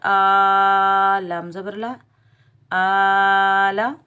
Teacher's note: حمزہ کے اوپر کھڑا زبر، ایک الف کی مقدار کھینچ کر ادا کریں گے